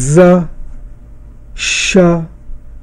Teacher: इसमें जो हवा जो है वो बिल्कुल संघर्षण या घर्षण के साथ निकल रही है, इसलिए इसके लिए हम संघर्षी ध्वनियाँ।